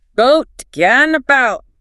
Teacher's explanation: In standard English boat is a round open O. In London it starts much lower in the mouth. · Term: the goat split